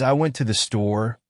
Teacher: in the phrase, I went to the store, native speakers tend to stress went and store